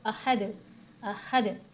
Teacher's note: اور دال پہ قلقلہ کرنا ہے، قلقلہ یعنی آواز کا پلٹ کر آنا